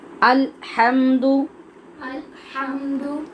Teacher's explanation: الحمد، الحمد، اس کے بارے میں آپ پہلے بھی پڑھ چکے ہیں کہ ہا آپ نے کیسے پڑھنی ہے، اور یہ جو لام ہے ہا سے پہلے، اس کے اوپر آواز ہم ٹکرانے نہیں دیں گے کہ الحمد کی آواز پیدا ہو، یہ سراسر غلط ہو جائے گا۔